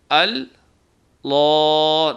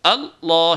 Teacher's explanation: کر کے نہیں پڑھنا ہے، یعنی اللہ نہیں کرنا ہے بلکہ اللہ شدت سے ملانا ہے تاکہ یہ تشدید کی آواز بنے، نہ کہ جزم کی آواز